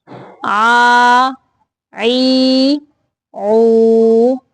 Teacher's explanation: وسط حلق یعنی حلق کے درمیانی حصہ سے عین ادا ہوتا ہے